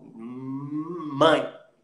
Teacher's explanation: Fecha o M bilabial, mãe. E aí o ar sai e você ouve o som.